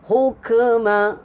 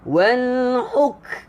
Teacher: Sifat huruf kaf adalah hams ataupun angin. Jadi dia tak boleh lantun. Kita tak boleh baca kaf ni hukma.